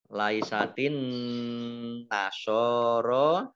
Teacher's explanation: nun tasdid dibaca gunnah atau mendengung ditahan 2 harokat. Shot fathah berdiri mat tabi'i, ro fathah berdiri mat tabi'i, ala lam fathah berdiri mat tabi'i, masing-masing dibaca panjang 2 harokat.